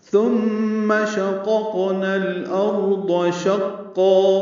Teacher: میم مشدد پہ غنہ ہے · قاف ساکن پہ قلقلہ ہے